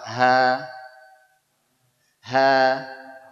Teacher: huruf yang keluar di pangkal tenggorokan ada dua yaitu Hamzah dengan ha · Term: huruf ha